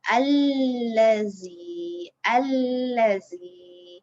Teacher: Bunyi alif lam tu tidak disebut. Alif lam tu tak disebut. Lepas tu cara bacaan dia, kita masukkan huruf lam itu ke dalam huruf za. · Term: alif lam syamsiah